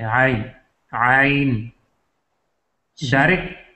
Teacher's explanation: دیکھیے آپ عین کی جو ہے سٹارٹ میں ایک حمزہ پڑھتے ہیں، عین نہیں عین نہیں ہے، یہ عین ہے، عین، عین، ڈائریکٹ آواز جو ہے وہ حلق کے وسط سے نکلتا ہے، جو عین ہے اس میں آپ حمزہ جو ہے یہ اقصائے حلق سے لے کے تو پھر اس میں آ جاتی ہے وسط حلق میں.